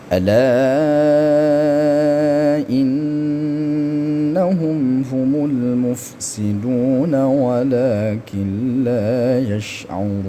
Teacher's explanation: Kemudian mufsiduna panjang 2 harakat, walakin panjang lakin, la nun mati bertemu dengan lam. Ini disebut dengan idgham bila gunnah. Yash'urun panjang 6 harakat ya.